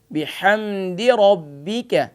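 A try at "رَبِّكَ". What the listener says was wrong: را کو فل ماؤتھ پڑھیں موٹا کر کے، ربک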